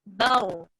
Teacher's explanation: Raw mati sebelumnya baris atas, bar, tebal.